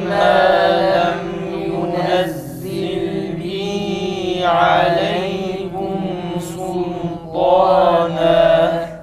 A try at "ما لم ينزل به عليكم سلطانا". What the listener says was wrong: Sin lam ince olsun. Sultan kelimesi sadece ta kalın. Sultana, sul değil. Lam da ince olsun.